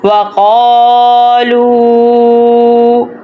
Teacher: اب یہ دونوں حروف مدالین والی حرکات ہیں، تو اس لیے ہم نے قا اور لو کو دونوں کو لمبا کرنا ہے۔ جیسے کہ کاف کے اوپر زبر، پہلا حروف زبر والا، دوسرا خالی الف ہے، پہلا حروف پیش والا، دوسرا واو ساکن ہے، تو اس لیے ہم دونوں کو لمبا کریں گے.